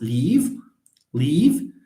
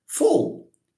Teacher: So one of them, the L, is called a clear L, and the other one is called a dark L.